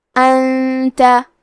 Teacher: کلمت انتا میں نون ساکن ہے پھر حرف التا ہے، تا حروف الاخفاء میں سے ہے تو ہم یہ حکم کو غنہ کے ساتھ ادا کریں گے